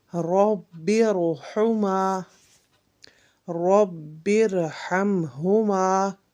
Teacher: جب را ساکن ہو اور اس سے پہلے حرف کو عارضی زیر دی گئی ہو، اس وقت بھی ہم را کو پر پڑھیں گے